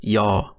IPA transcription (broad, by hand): j